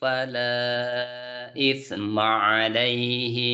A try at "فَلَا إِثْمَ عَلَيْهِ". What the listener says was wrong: Ahinya pendek tadi. Fala isma alaihi wa man. Nah, pendek.